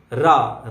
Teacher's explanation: ऐसा व्यंजन वर्ड जिसको हम बोलेंगे तो जीभ में कंपन होगा, वाइब्रेट करेगी जीभ। रा रा आप बोल के देखिए बार बार, रा, तो इसमें जीभ में कंपन होगा। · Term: लुंठित व्यंजन